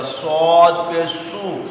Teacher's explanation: صاد میں سیٹی بھی ہے اور یہ پر بھی ہے، مستعلیہ حرف ہے